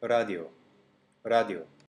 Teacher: ra is a flap your tongue flicks the top of your gums just behind your teeth that's called the alveolar ridge it also rolls sometimes just as